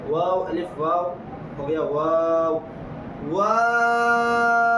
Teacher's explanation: پہلے واو کو واو میں ہونٹ گول، پھر الف مدہ ہے وہاں منہ کھولنا ہے، پھر سے ہونٹ گول ہو جائیں گے